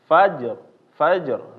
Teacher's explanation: ketemu ro rnya tebal jangan membaca menjadi tipis